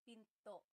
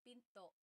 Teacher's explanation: Do you hear the glottal stop when I say pinto?